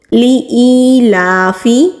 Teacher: یائے مدہ کو ایک الف کے برابر کھینچ کر پڑھتے ہیں۔ · لام کے اوپر کھڑی زبر ہے، کھڑی زبر کو بھی ایک الف کے برابر کھینچ کر پڑھتے ہیں۔ فا کو ہم ہونٹوں سے ادا کرتے ہیں ہلکی سی ہوا کے ساتھ